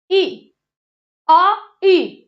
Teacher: ई को बोलने में जीभ आगे आई है तो जो ई है वो हमारा क्या हो जाएगा, ई साथियों अग्र स्वर हो जाएगा।